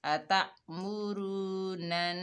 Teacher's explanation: अता मुरू, नून के ऊपर ज़बर है, आगे नून मुशद्ददा है, नून को मुशद्दद से मिलाएंगे और यहाँ पर नून मुशद्दद में एक अलिफ की मिकदार गुन्ना होगा